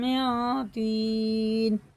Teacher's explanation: اس نون کو ناک میں لے جا کے ایک الف کے برابر کھینچ کے پڑھنا ہوتا ہے کیونکہ یہ حرف اخفا میں سے ہے۔